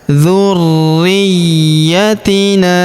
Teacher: huruf ya berharakat tasydid kita tahan dan kita tekan